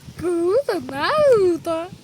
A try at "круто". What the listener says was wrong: Більше треба буде навчитись р вимовляти, а то ти не вмієш говорити правильно.